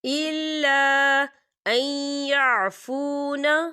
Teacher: الف مدہ بھی ہو رہا ہے اور چھوٹی سی اس میں مد بھی ہے، تو ہم اسے 4 حرکت کے برابر کھینچ کے پڑھیں گے